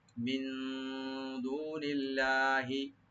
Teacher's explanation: মিন এখানে নুন সাকিন ইখফা করব আমরা।